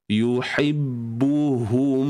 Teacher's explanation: ha yang seterusnya ni adalah ha yang datang daripada pangkal kerongkong.